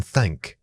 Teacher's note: To create the unvoiced thank, gently place your tongue between your teeth and blow air over it like a careful whisper. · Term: unvoiced sound